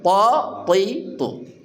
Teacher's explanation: th dari ujung lidah mengatup dengan kuat di langit atas kita